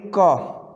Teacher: पीछे साउंड जो आ रही है वो अ की आ रही है